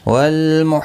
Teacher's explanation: حا وسط حلق والا ہے، اس کو صحیح ادا کریں۔